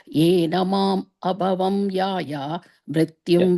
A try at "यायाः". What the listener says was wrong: Yayaha. If you pause there, the visarga comes there.